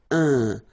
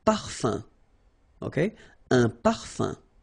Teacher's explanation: So remember, even if you've got this UM like that, phonetically it's exactly the same thing as if you would have UN. So it's nasal and it's un. So it really goes in your nose. You don't pronounce the M at all.